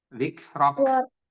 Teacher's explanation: Ada hamasnya sedikit di huruf K ketika dia menjadi sukun.